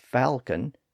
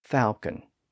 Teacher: Then in the 1500s, the L was added back into the word to reflect its Latin roots. And today, some people pronounce the word with the L sound as falcon, and some people pronounce it without the L sound